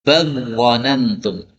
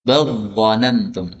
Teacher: ada lam sukun ketemu dengan dha. Ini boleh dibaca idgham. Maka lamnya lebur masuk menjadi dha.